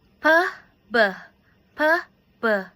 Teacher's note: P is a plosive bilabial voiceless and B is a plosive bilabial voice. P and B are sound from both upper and lower lips. And if you say P, there is no vibrate when you produce the sound.